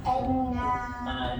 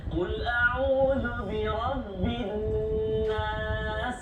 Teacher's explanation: Wajibul gunnah. Dengung dua harakat.